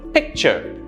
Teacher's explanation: My stress is on the first syllable.